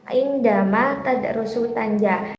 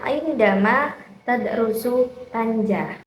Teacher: Dalam kalimat ini, di setiap antar katanya itu ada jeda. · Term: jeda antar kata dalam frasa